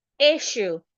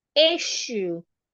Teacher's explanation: The S and S there changes to SH.